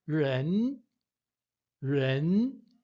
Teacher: Significa pessoa, no segundo tom, que também você vai ver que eu jogo mais para o E, né?